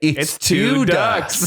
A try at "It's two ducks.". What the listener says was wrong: It's two. Yeah, the emphasis on the two, not even the duck. It's two ducks.